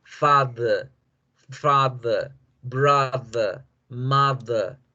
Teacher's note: No hacemos ni la R fuerte, ni hacemos nunca la E fuerte. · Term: schwa